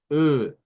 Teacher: lo que sería este este sonido es de es del francés Esta es la e redonda e es cuando se hace la e pero redondeando los labios